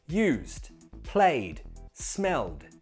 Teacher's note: They all finish in a voiced sound. So voiced sounds make that ED sound like a D.